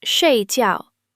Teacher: Both syllables are fourth tone, falling sharply, like a firm statement.